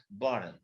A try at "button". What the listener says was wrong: No, you be soft with the T.